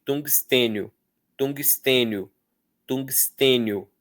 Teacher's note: Depois tem o ten, depois tem o nho. Esse I é uma semivogal porque ela é dita bem rapidamente.